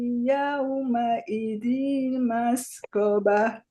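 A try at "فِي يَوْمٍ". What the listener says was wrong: Bukan yauma idin. Yaumi. Dengung.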